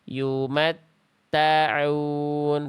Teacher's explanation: Harusnya yumat ta'un, bukan ta'un tapi ta'un. Ta-nya beres dulu clear, baru sabet masuk ain. Ya, yumat ta'un, bukan yumat ta'un.